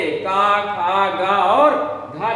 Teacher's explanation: फिर हा भी कंठ से निकलता